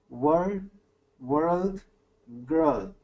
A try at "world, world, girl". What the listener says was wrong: Good, okay,